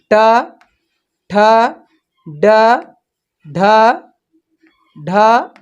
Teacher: जो टा वर्ग होता है वो क्या मुड़े, उसको मूर्धा कह देंगे